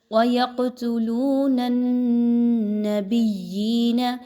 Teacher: وَيَقْتُلُونَ النَّبِيِّينَ بِغَيْرِ الْحَقِّ، یہاں پہ دیکھیے تو قاف پر جزم کی علامت ہے، قاف کو ہلا کر پڑھا جائے گا، اس کو آواز کو روک کے نہیں پڑھنا بلکہ ہلا کر پڑھنا ہے۔ نون کو نون کے ساتھ ملاتے ہوئے نون مشدد کا غنہ کیجئے